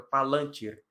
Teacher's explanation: No lan, a sílaba tônica